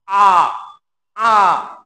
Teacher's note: এটা সামনেও যাবে না, পিছনে যাবে না, অর্থাৎ মাঝ গহ্বরে অবস্থান হবে। আ, আ। দেখো, উচ্চারণ হচ্ছে মাঝ গহ্বরে জিহ্বা। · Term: কেন্দ্রীয় স্বরধ্বনি